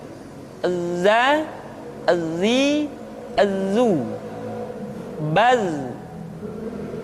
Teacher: ketika kita mengucapkan huruf za, suara kita mengalir, akan tetapi nafas tidak boleh mengalir. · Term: al-jahr